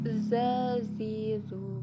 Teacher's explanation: Za dikeluarkan dengan ujung lisan diantara kedua gigi seri bagian bawah diucapkan dengan mengalir suara tanpa diiringi mengalirnya udara